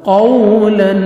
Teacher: قاف زبر واو جزم قو، لام 2 زبر لن، قولا. قاف کو موٹا کر کے پڑھیں گے، واو لین ہے، نرمی سے ادا کریں گے، لیکن لفظ کو راؤنڈ میں لے کے جائیں گے تاکہ واو اچھی طرح ادا ہو